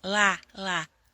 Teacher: a língua não sobe, a pontinha da língua não vai para o céu da boca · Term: língua presa